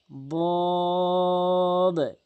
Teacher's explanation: জিহ্বার গোড়ার কিনারাটা মাড়ির সঙ্গে লাগাবেন · এরপরে দদ, অর্থাৎ জিব্বার গোড়ার কিনারাটা, ভালো করে বুঝবেন কথাটি, জিব্বার গোড়ার কিনারাটা মাড়ির সঙ্গে লাগাবেন